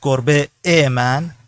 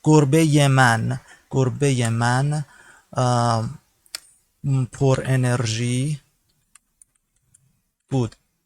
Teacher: This second a, this is a second vowel. Two vowels just after each other successively is a little difficult to be pronounced. Therefore, you add a mediator here, which is ye.